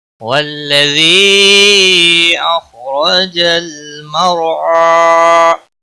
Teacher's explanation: مد منفصل ہے، 3 الف کے برابر کھینچ کر پڑھیں گے